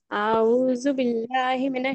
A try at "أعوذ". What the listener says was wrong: پڑھتے ہیں کہ ایک منٹ, اعوذ نہیں, کو نہیں کھینچنا. اعوذ اعوذ, حمزہ پہ زبر کی حرکت ہے, آواز آئے گی ٹھیک ہے.